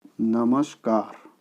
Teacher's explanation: परिवर्तन के नाम पर एक ही हो रहा है कि विसर्ग है वो आपका दंत्य स में बदल रहा है